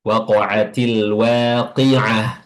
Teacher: fathahnya pada wau itu tetap tetap e tipis atau tetap terbuka seperti biasa